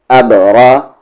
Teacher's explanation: را کی آواز اوپر ہے اس لیے را ہیوی ہوگی